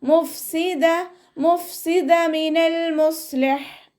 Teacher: മഖ്റജ് വരുന്നത് നമ്മുടെ മേലെ മുൻപല്ലിൻ്റെ അറ്റം താഴെ ചുണ്ടിൻ്റെ ഉൾവശത്ത് വെറ്റായ ഭാഗത്ത് വെച്ചിട്ട് ഉച്ചരിക്കുക